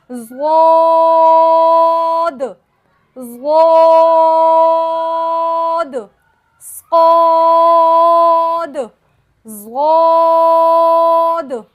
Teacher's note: ज़बान की दोनों करवटें जब ऊपर के तमाम धाड़ों की जड़ से लगे तो उससे ज़ौद अदा होगा। हमारे पास ज़बान है, ज़बान के दोनों किनारे हैं, ठीक है, दोनों किनारे हैं साइडों से, उसकी करवटें, उसको हमने ऊपर के तमाम धाड़ों की जड़ से लगाना है, जिसे अज़रासे उलिया कहते हैं, तो ज़ौद अदा हो जाएगा।